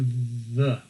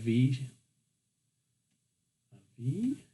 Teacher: And we're going to kind of like he's, say the word very. How's your teeth kind of touch your bottom lip there